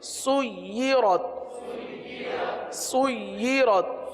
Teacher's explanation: یا پر تشدید ہے لہذا یا کو رک کر پڑھیں گے